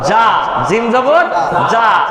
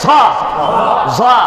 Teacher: জিম জবর যা, জিম জবর যা, আর এই যে ঝ জবর হবে ঝা, এটাও আকার গ্রহণ করে, কিন্তু জিম জিহ্বার মধ্যখান থেকে শক্ত, আর এই ঝটা কিন্তু জোরে হবে